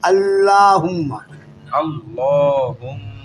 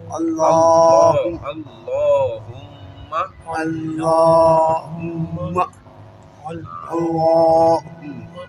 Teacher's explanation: لفظ اللہ اور اللہم کے لام کو موٹا پڑا جائے گا